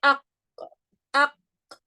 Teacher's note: The back of the tongue is touching the soft palate. There's a collision happening, okay? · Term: qaf